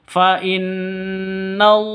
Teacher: lafzul jalalah itu kalau di tengah panjangnya Hanya dua ketukan